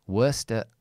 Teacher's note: worst I'm linking worst at worst at I don't say at because this word is a function word. So, I change the vowel to the schwa. I don't say t because I have a d here, which is very difficult.